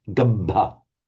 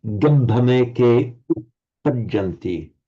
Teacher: being much more careful about holding the doubled consonants there